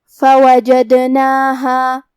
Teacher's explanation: حرف دال پہ جزم ہے تو یہاں ہم دال کو قلقلہ سے پڑھیں گے، اور قلقلہ کا معنی ہے حرف ساکن کو ہلانا، تو ہم حرف دال کو ہلاتے ہوئے یہ کلمہ کو پڑھیں گے.